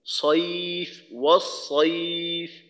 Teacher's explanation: তো হামজাটাকে আরেকটু দ্রুত উচ্চারণ করা, আর সয়ফ বলার সময় মুখটাকে খোলা রেখে তারপর মোটা করার চেষ্টা করা